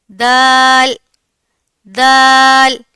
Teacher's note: Next word is दाल दाल दाल का इखराज ता के मखरेज से होता है। जब जुबान की नोक और ऊपर वाले सामने के दो दांतों की जड़ों से लगेगी तो दाल अदा होगा।